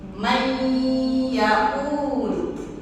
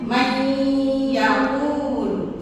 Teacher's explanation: Dan disertai dengan dengung. Dengungnya ini itu sekitar 3 ketukan. Mai yaul. Nah, masukkan ke hidung.